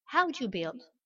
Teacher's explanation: C'est build comme si on avait un B et un I et pas de W ou de U entre les deux lettres.